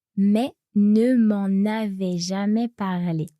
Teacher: So we hear the N as a normal N, not a nasal N.